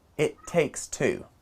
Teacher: the two t sounds join together to create one slightly stronger so it takes two becomes it takes two